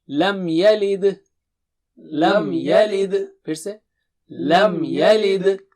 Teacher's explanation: لم یلد قلقلہ جو ہے دال پر ہوگا جب آپ رکیں گے